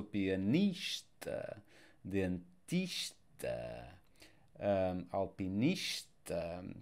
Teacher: here we are stressing the next last syllable